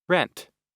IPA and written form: rent (rent)